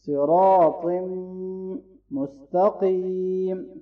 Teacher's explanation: قاف کو موٹا پڑھنا ہے اور یا مدہ ہے اس کو لونگ کریں گے